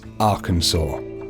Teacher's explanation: should be pronounced in three syllables with the final s silent the a in each syllable with the Italian sound and the accent on the first and